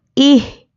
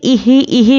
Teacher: یہ دیکھیے یہاں پہ غلطی کر دیتے ہیں کہ ایہی ایہی بولتے، لیکن یہ غلط ہے، اس طرح سے ہا پہ قلقلہ بالکل بھی نہیں کرنا ہے